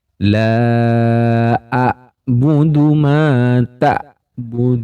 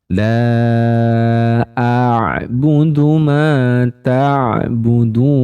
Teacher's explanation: kesalahan yang paling sering terjadi yaitu bunyi ain sukunnya ini terdengar mirip dengan suara hamzah sukun